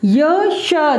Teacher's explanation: ये जो य और श बोलते हैं तो कहाँ जीभ जो है वो तालु की ओर उठती है। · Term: तालव्य